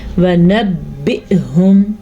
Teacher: جھٹکے کی آواز حمزہ کی ہی ہونی چاہیے نہ کہ عین کی. یعنی کہ بعض لوگ اس کو پڑھتے ہیں وَنَبِّئْهُمْ، عین کی طرف چلے جاتے ہیں، یہ جائز نہیں ہے، یہ حمزہ ہے تو اس کو ہم حمزہ ہی پڑھیں گے. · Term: ساکن حمزہ